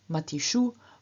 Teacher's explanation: with su changing into shu due to ruki